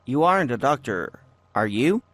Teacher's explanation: so rising intonation which means the speaker is asking a real question